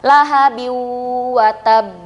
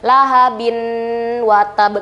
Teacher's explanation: Jadi bacanya bukan lahabin watab, nggak gitu ya. Langsung meleburkan huruf ba yang berharokat kasratain menuju ke huruf wa. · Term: idgham bigunah